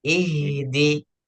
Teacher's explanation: Bacaannya harus keluar suara atau desis yang keluarnya dari dada. Oh ya. Jadi kalau tadi bacaannya dina, jadi seakan-akan itu desis tidak sampai yang keluar itu bukan dari dada, tapi hanya dari sebagian tenggorokan saja atau bahkan dari mulut saja. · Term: huruf H